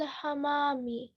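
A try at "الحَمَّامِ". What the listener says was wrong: حمامی, تشدید ہے نا, تو حمامی نہیں بول سکتے, حمامی بولیں.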